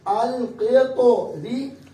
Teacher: ہم لام کی آواز کو کیا پڑھیں گے؟ باریک کریں گے, اور را کو بھی باریک ادا کریں گے